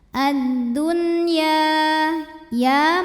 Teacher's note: Karena nun sukun menghadapi huruf ya dalam satu kata yaitu kata ad-dunya, maka nun tetap dibaca dengan jelas. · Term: idhar